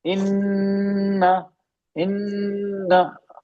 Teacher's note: इन्ना, इन्ना, तीन हरकत खींचेंगे, दो तीन हरकत नाक में खींच रहे हैं ना, रोक के रख रहे हैं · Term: गुन्ना